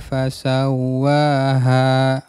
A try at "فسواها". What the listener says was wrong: Agak dihentakkan, sawwaha, ditasydid wa-nya.